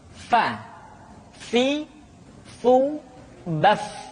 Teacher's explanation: diucapkan dengan menyentuhkan ujung dua gigi seri kita bagian atas dengan bibir bawah bagian dalam Fa seperti kita mengucapkan huruf F di dalam huruf latin Fa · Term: huruf Fa